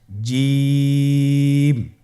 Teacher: জিহ্বার মধ্যখান তার বরাবর উপরের তালুর সঙ্গে লাগিয়ে উচ্চারিত হয়